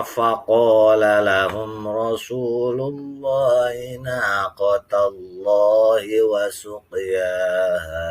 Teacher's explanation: Nah, di sini ada mim mati ketemu ra, itu namanya idhar syafawi. Ra-nya ini merupakan ra tafkhim atau ra yang dibaca tebal.